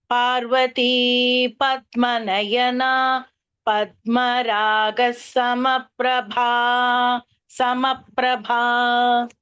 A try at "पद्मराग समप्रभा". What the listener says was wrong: It seems like there was a dvitva on the sa. It is Padmaraga Samaprabha.